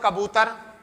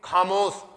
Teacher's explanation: ठीक है, जैसा आप बोलोगे खामोश, तो ख जो होगा उसमें बेस ज्यादा होगा, और कै में जो होगा बेस होगा नहीं, तो कै में बेस कम होगा और ख में बेस ज्यादा होगा, तो उसे कहते हैं हंकार।